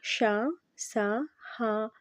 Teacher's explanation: గాలిని బయటకి ఊతూ పలికే అక్షరాలు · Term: ఊష్మాలు